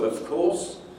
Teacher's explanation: affected by connected speech processes so of course where the v the phonetic v of of this ideal form of in its weak form turns into an f voiceless f